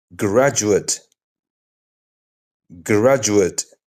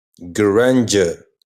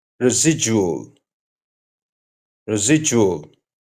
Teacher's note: Let's look at a few everyday words where D quietly turns into soft J. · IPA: /dʒ/